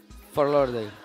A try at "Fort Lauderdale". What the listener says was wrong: Pero no la mueva tanto, menos. Menos. La está tratando de mover. Menos. No mueva los labios.